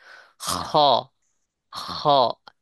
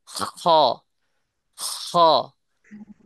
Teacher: হলকে শুরু হইতে খ উচ্চারণ হয়